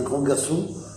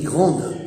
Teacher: Quand on dit un grand garçon, on ne prononce pas le D. Et quand on dit grande, on prononce le D.